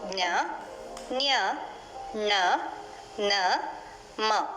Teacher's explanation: ಅನುನಾಸಿಕ ಎಂದರೆ ಮೂಗಿನ ಸಹಾಯದಿಂದ ಉಚ್ಚರಿಸುವ ಅಕ್ಷರಗಳು. ಜ್ಞ, ಜ್ಞ, ಣ, ನ, ಮ. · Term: ಅನುನಾಸಿಕಗಳು